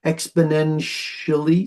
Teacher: exponentially sounds like a sh doesn't it doesn't sound like a TI